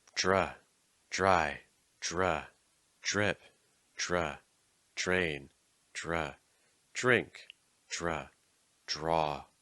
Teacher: A DR or druh sound almost becomes like a j with a little bit of an R added after it